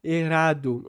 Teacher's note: a troca do R forte pelo R fraco